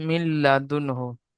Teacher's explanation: এখানে হবেন সাকিনের পরে হরুফ হালকি ছয়টি অক্ষরের মধ্যে হাসছে তাই নুন সাকিনকে বিনা গুনাহ জাহির করে তাড়াতাড়ি পড়তে হবে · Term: ইজহার